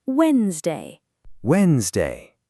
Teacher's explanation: in real English, the D and E in the middle are silent.